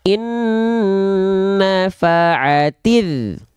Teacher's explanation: Maka ketika kita lafalkan dari ti, langsung tanpa dipanjangkan, tanpa diseret, langsung masuk ke huruf dal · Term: alif lam syamsiyah